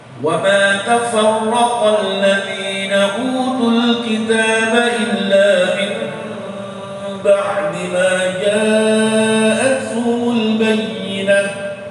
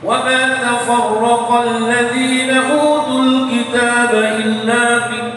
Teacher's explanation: ucapan ikhfa ini harus bibir dua ini bertemu tapi tidak boleh rapat. Namanya intibak wa yutam, nutup tapi dengan tidak sempurna. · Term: iqlab